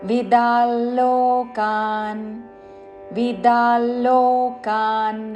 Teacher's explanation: అనుస్వారం తర్వాత పదములోని ల అందుకుంటూ అనుస్వార నాసిక ల ఉచ్చారణ